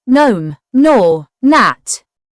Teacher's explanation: The n is pronounced, and the g is not heard. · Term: silent g